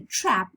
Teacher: And then for the trap, the front of the tongue is low.